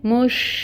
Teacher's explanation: شین کے اوپر ساکن کوئی حرکت نہیں ہے، جزم لگی ہوئی ہے، ساکن ہے، اس کی صفت کو واضح کرنا ہے۔ اس میں کیا صفت ہوتی ہے؟ اس کی تفشی ہوتی ہے